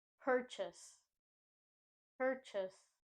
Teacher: Chase in this word is pronounced as chus similar to the U or uh sound like in the words Up and Under